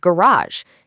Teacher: North Americans tend to stress the last syllable, saying garage.